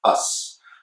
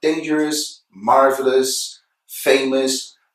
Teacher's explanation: So it's never O's, it's always us. It's the sound the schwa, plus s, us.